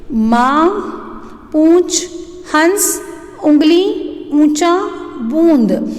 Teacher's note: मुख और नाक इन दोनों से इनका उच्चारण होता है। · अनुनासिक यानी कि जो चंद्रबिंदी होती हैं, अनुनासिक यानी कि बिंदु, जिन वर्णों का उच्चारण करते समय हवा नाक और मुंह दोनों से निकलती है, सेम अनुस्वार की जैसे ही इनका भी जब उच्चारण करते हैं तो हम नाक और मुंह का उपयोग करते हैं